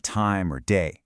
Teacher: So in standard English when you say words like time or day, the very tip of your tongue taps that bumpy ridge right behind your top teeth, that's called an alvolar sound.